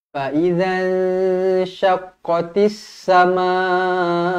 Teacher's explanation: Fa idzan ikhfa hakiki, dengung 2 harakat